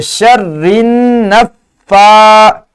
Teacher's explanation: اس لفظ میں 2 مرتبہ شد استعمال ہے اور 2 مرتبہ کھڑی زبر آئی ہے، تو اس لیے شد کے لفظ پہ شرن، را کو نون سے ملائیں گے، پھر نون کو اس فا سے ملائیں گے، شرن نفا، اور پھر اسے لمبا بھی کریں گے چونکہ یہاں پہ شد آئی ہے.